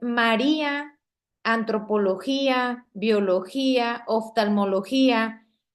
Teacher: Estas son palabras graves porque la i se separa de la a.